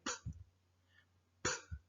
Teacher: there is no vibration. Okay, you only produce air from your mouth.